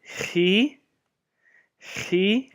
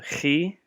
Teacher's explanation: kind of like a guttural in the back of your throat